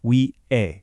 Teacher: When you say 위해, that H sound is often super soft, so a lot of the time it just sounds like Wi-hae.